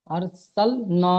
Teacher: আলিফ মাদ্দাকে এক আলিফ পরিমাণ টান দিয়ে পড়তে হয়